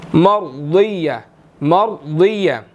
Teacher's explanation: را بھی موٹا ہے، واد بھی موٹا ہے، یہاں پر ان دونوں کو موٹا کر کے ادا کرنا ہے